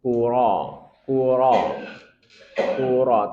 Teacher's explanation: Hukum ro. Rnya dibaca tebal. Kuro, kuro, kur tebalkan karena dia berharakat fathah.